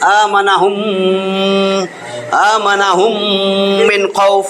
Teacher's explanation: মিম সাকিনের পরে মিম আসলে তাসদিদ দিয়ে মিলাইয়া গুন্না করে পড়তে হবে